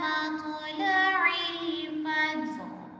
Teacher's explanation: اور الفجر جیم پر قلقلہ کریں گے